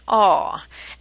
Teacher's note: a is a deep sound far back in our mouth and this is the long sound